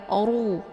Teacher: ro yang mesti dibaca tebal karena ro ini berharakat zumah cara bacanya posisi pangkal lidah terangkat ke langit ru bukan ru tapi ru ya dan ru ini dibaca panjang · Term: tafkhim